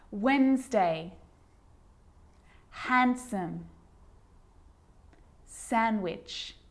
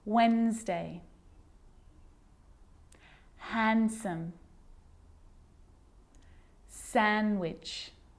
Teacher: I'm not pronouncing the D in sandwich. I'm just pronouncing the consonant N sound before it.